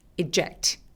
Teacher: 이 단어는 강세가 이음절에 오기 때문에 앞에 이 부분은 그냥 살짝 리듬만 맞춰주세요.